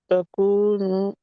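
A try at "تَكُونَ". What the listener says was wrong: तकू ना पहले लंबा कर रहे थे, अब तकू नून के ऊपर पेश डाल रहे हैं।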